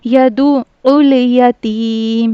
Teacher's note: यहां पर या मदद्दा है खींच कर पढ़ना है इसको · तशदीद वाले हुरूफ को 2 मरतबा पढ़ा जाएगा, पहले दाल आइन पेश दू और फिर आइन लाम पेश उल, यदु उल, और आइन का मखरज हलक के दरमियानी हिस्से से अदा होता है